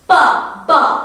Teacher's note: It involves the 2 lips, p, b, and you can, when you articulate p and b, you can see how exactly, there is an explosive sound, because 2 organs of articulation, they are in complete contact with each other, and when the air pressure, it builds up, and then when the 2 organs of articulation, here the 2 lips, they part with an explosion. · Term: bilabial